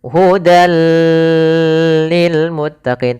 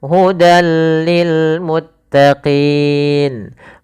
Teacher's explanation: Idgham adalah kita memasukkan tanwin ke huruf setelahnya di kemudian bila gunah tanpa disertai dengan guna atau penahanan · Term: idgham bila ghunah